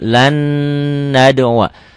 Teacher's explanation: Karena nun mati ketemu nun. Ini nggak kelihatan ya bunyi N-nya. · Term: idgham bigunnah